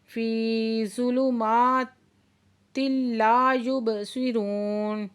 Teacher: فی پہ یا ساکن سے پہلے زیر ہے تو یا مدہ ہے، 2 حرکت کھینچ کے پڑھیں گے